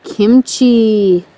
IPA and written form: ˈkɪmtʃiː (Kimchi)